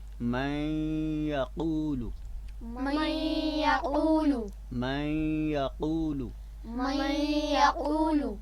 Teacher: یعنی غنہ کے ساتھ نون ساکن کو یا میں ملا کر پڑھیں گے۔ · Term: ادغام